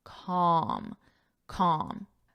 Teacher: the L is silent